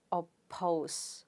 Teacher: per sound is at the beginning of a stressed syllable because the stress is on the second syllable. Therefore, you pronounce it as oppose. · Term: aspirated